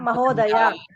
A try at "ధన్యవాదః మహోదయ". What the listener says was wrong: Correct, ఉత్తమం.